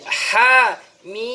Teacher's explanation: cara bacanya hanya panjang satu alif. Kemudian mimnya mad lazim harfi mukhaffaf. Jadi ha mim.